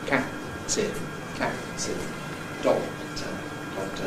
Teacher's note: The release of the first one takes place during the whole of the second one, and therefore you can't hear it. And all you can hear is an approach for a P, cap, and a release for a T. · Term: release masking